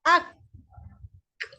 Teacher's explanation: kaf dengan qaf berkongsi makhraj tetapi kaf ada pertambahan iaitu pada lelangit yang bertulang.